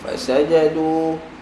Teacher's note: jangan panjangkan fa, sin maupun jim.